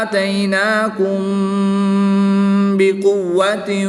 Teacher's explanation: میم ساکن کے بعد حرف با آ گیا تو یہاں پر اخفاء شفوی ہوگا، یہاں پر غنہ کر کے پڑھیں گے